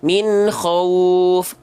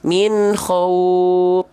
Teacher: pastikan keluar nafasnya dengan jelas karena dia punya sifat hams mengalirkan nafas